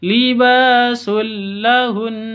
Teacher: izhar syafawi ba panjang dua ketuk karena ada Alif diawali dengan fathah tanwin bertemu dengan lam sama dengan yang di depan masuk ke lam tanpa dengung tidak boleh dengung